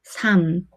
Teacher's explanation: 리을 미음 is pronounced as the 미음 sound